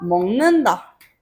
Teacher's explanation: 먹는다도 기역은 이응으로 바뀐다